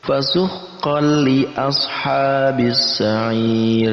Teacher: Idgham itu artinya digabungkan, sedangkan bila hunnah itu artinya tanpa dengung. Kita gabungkan antara tanwin dan lam, ya, di situ ada lam, tapi digabungkan tanpa dengung. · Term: idgham bila gunnah